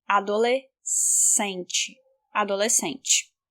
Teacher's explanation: S and C together has only one sound, which means equals S sound. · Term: dígrafo